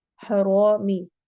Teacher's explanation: رو کو موٹا کرنا ہے اور لمبا کرنا ہے